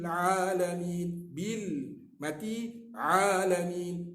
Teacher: Ain huruf tawassut. Cuba sebut kita akan merasa tengah-tengah halak ni. Di tengah-tengah halqum ni, biji halak ni.